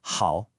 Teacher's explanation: hao is the third tone, which dips down, then comes back up.